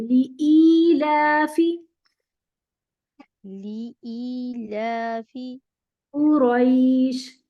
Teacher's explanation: ای دو حرکت پورا ہونا چاہیے.